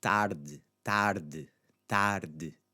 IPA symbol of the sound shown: ɨ